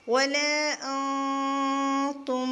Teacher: میم ساکن کے بعد عین آ رہی ہے، تو ہم یہاں پر اخفاء شفوی نہیں کریں گے، اظہار کریں گے